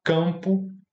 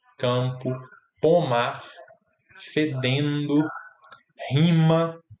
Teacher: E ele sai um pouco pelo nariz, ele está nasalizado.